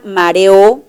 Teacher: la palabra mareo la última sílaba también es tónica